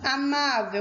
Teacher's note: a palavrinha amável é uma paroxítona. Possui a penúltima sílaba forte e é terminada em letra L.